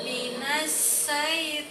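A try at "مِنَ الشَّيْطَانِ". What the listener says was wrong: Nah, sya kalau di Latinnya SYA. Sya. Nah, tebalkan lagi. Nah, tidak boleh manyun. Tebal, ya tebal.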